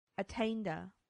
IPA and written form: əˈteɪndə (attainder)